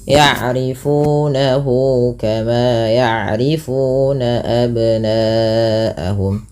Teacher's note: Nah, kemudian pada lafal nahu ada mad silah qasirah, yaitu mad yang terjadi ketika adanya hal dhamir yang berbentuk seperti ini atau bundar ya, maka dia dinamakan dengan mad silah qasirah, panjangnya sama dengan mad tabi'i yaitu 2 harakat